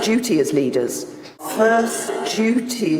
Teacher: in Britain this word can be pronounced with a D sound duty but it's also commonly pronounced with a J sound duty this change from dear to J is called yod coalescence